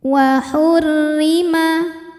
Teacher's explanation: huruf ro dibaca secara tarqik karena ro berharakat kasrah maka rnya ini dibaca dengan tipis